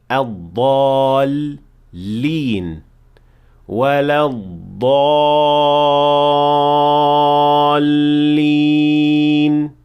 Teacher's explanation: इसे लंबा करना नहीं। चुनांचे लाम को बगैर किसी किस्म के खिंचाव के दुगना अदा करना है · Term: तशदीद